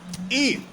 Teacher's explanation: ई का उच्चारण स्थान तालु है, तालु से ई को बोला जाता है। मुर्दा ओष्ठ उच्चारण स्थान ई के नहीं है।